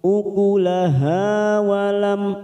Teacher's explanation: mim sukun bertemu ta idhar safawi kita baca jelas